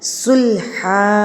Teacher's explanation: یہاں پر آپ نے 1 زبر اور 1 الف کو پڑھنا ہے، ہا کو لمبا کر دینا ہے